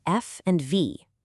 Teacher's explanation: Notice how you're using your bottom lip and your top teeth? That's labiodental.